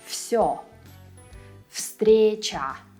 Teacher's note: It kind of blends into the following sound. The voiced V here is right before a voiceless S. So V also turns into a voiceless F to make it easier to pronounce the word.